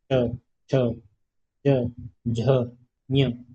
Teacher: च वर्ग का जब हम उच्चारण करते हैं तो प्राण वायु तालु को टकराती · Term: तालव्य